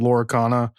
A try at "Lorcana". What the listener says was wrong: Well, you said Lorcana again instead of Lorcana. It's Lorcana, not Laura.